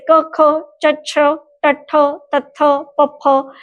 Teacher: ये सारी ध्वनियां अघोष ध्वनियां हैं · अघोष अर्थात जिनके उच्चारण में गूंज नहीं होती